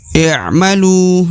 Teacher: Maka huruf lu harus dipanjangkan 2 harokat ya.